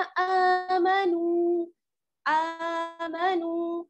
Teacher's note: हमजा खड़ा जबर आ, खड़ी हरकत को हम खींच कर पढ़ते हैं